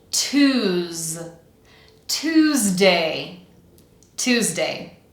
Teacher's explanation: We have the sounds t, oo, z. Vibrating z sound.